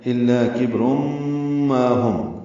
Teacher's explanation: کبر میں کاف باریک ہے، با ساکن پہ قلقلہ ہے، را پر ہے کیونکہ اس پر 2 پیشیں ہیں. تنوین کے بعد میم آنے کی وجہ سے روم، را پر ہے اور میم مشدد ہو گیا، یہاں پہ غنہ کریں گے. یہ ادغام مع الغنہ ہے.